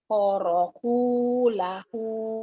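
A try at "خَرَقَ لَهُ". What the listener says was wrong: Kho-nya biar jelas. Khoroku lahu.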